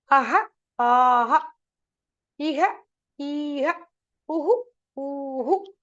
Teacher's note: So the visarga also, the pronunciation, it takes the vowel which precedes it.